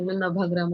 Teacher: व च ब म्हटलं जातं बंगाली भाषेत नाभाग्राम असं नाव आहे पण आपण व उच्चार करतो